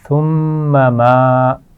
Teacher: اور اس کے بعد ہے ما، پھر میم ہے اس کے اوپر زبر، لیکن اس کے بعد الف ہے، الف مدہ بن رہا ہے. تو پہلے میم کو کھینچ کر نہیں پڑھنا، دوسرے میم کو کھینچ کر پڑھنا ہے